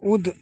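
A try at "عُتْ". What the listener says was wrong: উত, উদ নয় উত, উত,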